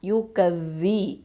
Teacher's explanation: அடுத்தது யா தொம்மா யூ, காஃப் ஃபத்ஹா தால் ஷத்தா கஸ், தால் கெஸ்ரா வி, யூ கஸ்ஸி. இந்த ஜால் வந்து தரஃபுல் லிசான் நுனினாக்கு மேல் முன்பற்களுக்கு கீழே வச்சு சொல்லணும்